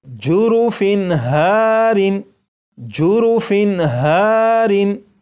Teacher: پر فا کے نیچے تنوین، تنوین کے بعد ہا ہے اور ہا حروف حلقی میں سے ہے، اس لیے یہ جو تنوین ہے اس کے نون ساکن کو ظاہر کر کے پڑھیں گے